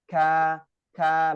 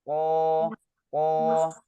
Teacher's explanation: kalau huruf Kaf ada aliran nafasnya